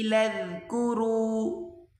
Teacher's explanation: یہاں پر بڑی مد ہے تو اس کو 4 الف کی مقدار کھینچ کر پڑھا جائے گا. اسرائیل اذکروا، لام کو ذال کے ساتھ ملا کر پڑھیں گے.